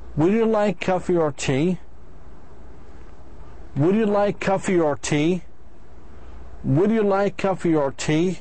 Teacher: Number one, in yes/no question, the answer is yes or no. The speaker's voice goes up 2 times.